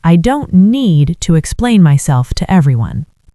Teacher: I want you to put a little more stress on the word need.